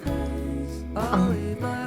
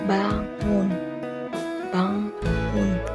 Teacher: pangkal lidah menempel langit-langit dan udara keluar lewat hidung